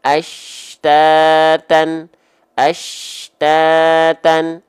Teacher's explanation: Yang penting ngayun dulu 2 harokatnya tepat, enggak kepanjangan, enggak kependekan. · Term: mad tabi'i